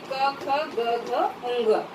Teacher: और इन पहला क वर्ग का उच्चारण स्थान है कंठ।